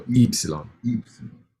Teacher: Yeah. Remember, this is stressed here on the I, and the I is pronounced E